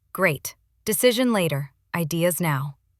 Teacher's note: Falling tone tells people we're done with this point.